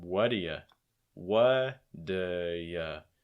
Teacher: Instead of saying what do you, typically it's going to become what do ya?